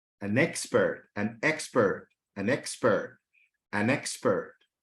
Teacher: You notice that expert is emphasized. There is a stress on expert